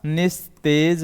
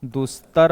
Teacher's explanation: तो दोस्तों यहां पर क्या है, विसर्ग के बाद अगर त आ रहा है तो विसर्ग किस में परिवर्तित होगा दोस्तों? विसर्ग आधे दंती स में परिवर्तित होगा